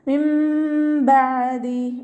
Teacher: നൂനിൻ്റെ സൗണ്ടിനെ അവിടെ കേൾക്കേയില്ല. നൂനിൻ്റെ സൗണ്ടിനെ നമ്മൾ മീമാക്കി മാറ്റി മറിക്കും ചെയ്യുക. അതോടൊപ്പം തന്നെ ഉണ്ണ കൊടുക്കുകയും ചെയ്യുക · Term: ഇഖ്ലാബിൻ്റെ മീമാണ്